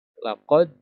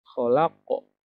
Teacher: kalau dal itu ketika sukun ada bunyi e, laqad, kalau qof bunyinya hampir ke o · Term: qalqalah